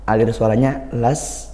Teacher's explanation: Nah, ini ada sin sukun. Sin sukun kita desiskan ya, dialirkan suara dan nafasnya. Alir suaranya las, kemudian nafasnya s.